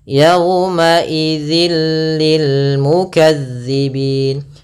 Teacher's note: suara tanwinnya masuk ke huruf lam dan nunnya, suara nunnya hilang. Awalnya yauma idzin ketemu lam langsung ke lam, jadi mengganti l. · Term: idgham bila gunnah